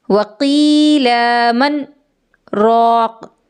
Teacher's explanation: من پہ میں رک گئی، رکی لیکن میں نے سانس نہیں توڑا، میں رکی میری آواز رک گئی لیکن سانس میری جاری تھی، میں نے یہاں سانس نہیں لیا، تو اسی کو سکتہ کہتے ہیں۔